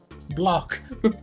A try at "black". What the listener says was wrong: I don't like the way you're pronouncing your A's as O's.